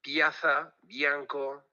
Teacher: yo hablo el Oriental y hay una palatización de la l